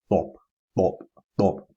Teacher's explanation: it's like letter T, but a little bit thicker and more emphatic